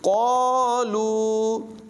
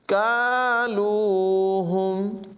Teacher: کالو اس کا مطلب ہوتا ہے وزن کرنا یعنی ماپنا، اور اگر اس کو پر آواز میں پڑھیں گے یعنی قالو تو پھر اس کا مطلب ہوگا کہنا یعنی بات کہنا، یعنی دو نقطوں والا قاف جو ہے اس کی آواز پر ہے، اور یہ جو ڈنڈی والا قاف ہے اس کی آواز باریک ہے۔ تو یہاں پر باریک آواز میں ادائیگی کریں گے، وگرنہ معنی میں خرابی آ جائے گی، یعنی اس کو پڑھیں گے کالوہم۔